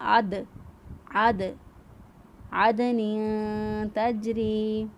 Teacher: دال ساکن پر ہم نے قلقلہ کیا